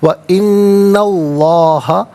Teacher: इन्ना में नून पर ज़बर है, इसे इसमें अल्लाह की हरफ लाम के साथ मिलाएंगे, दरमियान में से अलिफ यानी हमज़ा को हज़फ किया जाएगा